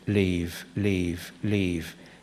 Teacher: you can hear a slight diphthong there